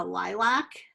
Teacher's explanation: So this is a lilac, and the first syllable, lie, is long. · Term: long vowel